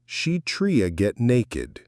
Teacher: This sounds like she tria get naked. Tried to often becomes tria, like an R sound in American English.